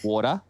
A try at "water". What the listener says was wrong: There's no T's. There's a...